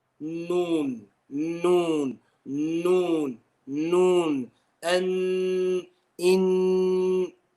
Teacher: Now, the sound goes to the nose in the letter noon. Okay, so it's got a touch of khayshum in there. · some air will flow through the khayshum